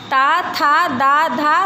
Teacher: इन व्यंजनों का उच्चारण ऊपर के दांतों पर जीभ से लगने से होता है।